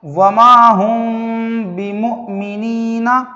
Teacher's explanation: میم ساکن کے بعد با آیا ہے، اس کو اخفاء شفوی کہتے ہیں، اور یہاں بھی غننے کے ساتھ اخفاء ہوگا